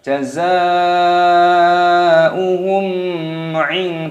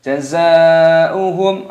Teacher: Mim sukun bertemu dengan ain, hukumnya dibaca idhar syafawi, dibaca jelas. Jangan didengungkan.